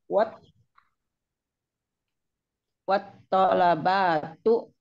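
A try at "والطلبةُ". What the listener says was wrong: tuh batunya masih pegang kepanjangan itu. Wat, berhentilah di sukun. bisa lebih ringan begitu di lidah. Wat tola batu. Itu daripada wat tola batu gitu.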